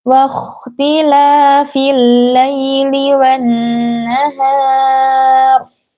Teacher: Dalam kata wakhtila ini kha-nya dibaca tebal karena sebelumnya huruf yang berharokat fathah dan ada mat di sini.